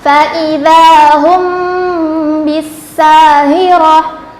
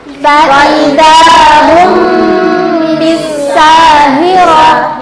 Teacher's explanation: Jadi ihfa itu artinya menyamarkan suara mim sukun dengan disertai dengung apabila ada mim sukun yang bertemu dengan huruf ihfa, yaitu huruf ba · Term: ihfa syafawi